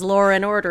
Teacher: he puts that intrusive R in there